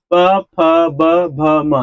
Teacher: जब भी आप प फ का उच्चारण करेंगे तो आपका दोनों ओठ सटेगा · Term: ओष्ठ ध्वनि